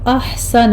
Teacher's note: احسنہ میں ہا پر ہمس ہوگا